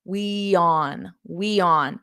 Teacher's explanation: to go from the we which ends in a vowel to on which starts in a vowel what we can do is add a little y so a gliding sound we on we on so it kind of sounds like this